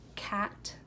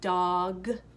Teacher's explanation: K and G sounds those are both sounds that are produced in the back of your throat